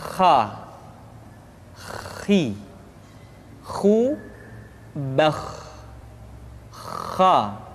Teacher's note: Kha, pangkal tenggorokan. Diucapkan dengan mengalir nafas. Atau lebih praktisnya, pengucapan huruf kha persis terdengar seperti orang yang tidur dalam keadaan mengorok.